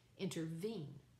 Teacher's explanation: So now we have three syllables with the accent on the third syllable. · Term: anapestic, Anapestic